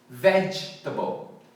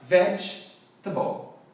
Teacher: a pronúncia certa é com a ênfase na first syllable